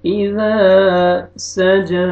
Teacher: جیم کو مرکھڑا زبر ہے، جیم کو آپ نے کھینچنا ہے